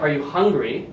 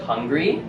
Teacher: Hungry, it starts low, and it goes up.